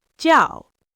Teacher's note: a sharp, decisive drop. Jiào, like you're stamping a piece of paper.